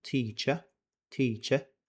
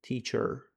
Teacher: Britaniyada teacher teacher e bilan tugaydi. Amerikanskiyda oxiriga r tovushini qo'shib qo'yasizlar